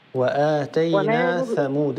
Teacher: الثاء مثلثة من طرف اللسان مع أطراف الثنايا العليا